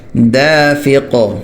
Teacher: قاف حروف قلقلہ میں سے ہے تو وقف کی صورت میں قلقلہ ہوگا